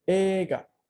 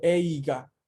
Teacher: Ei se pronuncia E larga.